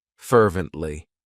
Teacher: It has 3 syllables, and the stress is on that first syllable,